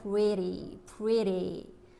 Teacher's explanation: T가 모음과 모음 사이에 있을 때 우리 리을 소리 flap sound T로 바꿔서 발음된다고 말씀드렸죠? 기억하시죠?